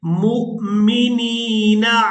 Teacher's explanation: यहाँ मीम को हमजा साकिन के साथ मिलाएंगे तो झटके के साथ अदा करेंगे।